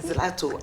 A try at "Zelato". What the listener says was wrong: The L is silent.